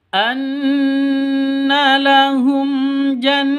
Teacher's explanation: mim mati bertemu dengan jim. Cara bacanya jelas terang karena bacaan izhar safawi.